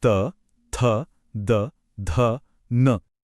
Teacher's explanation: अब जीभ छूती है ऊपर के दांतों के ठीक पीछे। ये हैं दंत्य ध्वनियां, जैसे त और द।